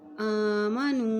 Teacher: अलिफ के ऊपर खड़ी ज़बर है इसलिए इसको एक हरकत लंबा पढ़ेंगे।